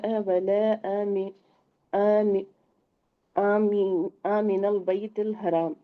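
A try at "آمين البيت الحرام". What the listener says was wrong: آمینہ مد ہے، ساتھ جوڑنا بھی ہے، ٹھیک ہے؟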